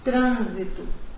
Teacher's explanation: Essa consoante, o N, ele está nasalizado. Quando você fala, você vê que o som sai pelo nariz. Né? Trânsito. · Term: consoante nasalizada